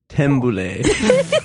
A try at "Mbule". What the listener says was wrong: Get rid of the T.